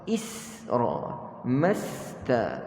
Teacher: pastikan huruf sin yang kita matikan itu kita tidak lantunkan.